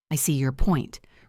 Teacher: Listen to the stress on see and point.